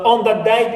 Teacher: the sound da is influenced by what comes before it, sound before it, which is na, nasal na, and it becomes na